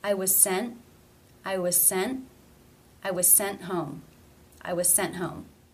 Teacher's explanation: you pronounce the T in this sentence it's an ending t it's part of a consonant cluster but remember NT was the exception consonant cluster so the T here is a stop